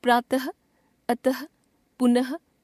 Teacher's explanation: विसर्ग, विसर्ग को भी हिंदी वर्णमाला में स्वरों के साथ लिखने की परंपरा है। इसका उच्चारण केवल संस्कृत से आए कुछ तत्सम शब्दों में किया जाता है और उच्चारण ह की तरह होता है।